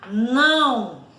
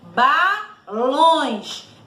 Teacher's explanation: E o tio, que é tipo uma ondinha em cima da vogal A ou da vogal O, não é isso? Aí, ó, indica a pronúncia nasal das vogais A e da vogal O.